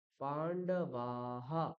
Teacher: বিসর্গের আগে ধরুন আকার দিয়ে বিসর্গ আছে, তাহলে উচ্চারণ কি হয়ে যাবে, বিসর্গটা হা উচ্চারণ হয়ে যাবে। যদি ইকার থাকে তাহলে বিসর্গও হয়ে যাবে হি, হয় রস্য ইকার।